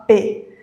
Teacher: Perceba que os nossos lábios se encontram, se juntam. P. Então, isso representa uma obstrução da passagem do ar pela boca. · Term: letra P